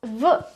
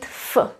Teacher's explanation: v, the vocal cords vibrate, and f is just air. The vocal cords don't vibrate as much. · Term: paired consonants